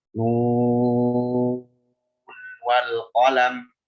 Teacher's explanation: kalau diwasal ke wal qalam, maka di sini dalam riwayat Hafs, Tariq Syatibiyah, dia harus dibaca izhar.